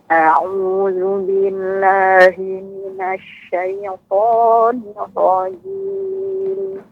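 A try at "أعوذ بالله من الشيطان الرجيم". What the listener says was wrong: Untuk ra Ibu yang bertasydid ini harus sedikit lebih ditekan.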